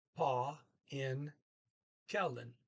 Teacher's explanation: He does not pronounce the V in kvin like other people do.